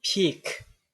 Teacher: in peak, this P is realized as an P with an aspiration. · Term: P with aspiration